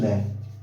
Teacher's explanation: अब एक ऐसा शब्द है जिससे बोलने पर है ना बगल से हवा निकलती है, जिसे बोलते हैं पार्श्विक